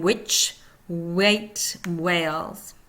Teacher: Upside down W, HW, voices velar glide. Back part of tongue raised towards soft palate and lips rounded. Heard in which, wait, whales.